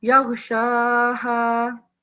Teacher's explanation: So Sheen has vertical fatha, يَغْشَاهَا, 2 seconds prolongation